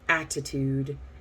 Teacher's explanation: attitude actually has two so flap t and then regular t